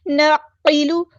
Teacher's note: کرنا ہے، قاف ہمارا ہیوی لیٹر پورا ادا کریں گے، نعقل، لام کی پیش کو ہم لمبا نہیں کریں گے، حرکات کو لمبا نہیں کرتے